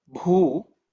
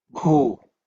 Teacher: which is the fourth letter in the pa varga, b, with extra air, b, and u, which is longer u